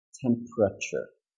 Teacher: two three four syllables but actually American speakers are very lazy you don't want to say four syllables when we could just say three syllables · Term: consonant cluster